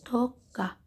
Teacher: Toqqa sözündə birinci q keçir olur k, ikinci q isə olduğu kimi qalır.